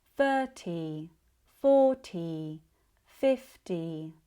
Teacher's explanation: 30 40 50 all have stress on the first syllable. So, the second one, as we noticed before, is not said as light or as bright as the first one.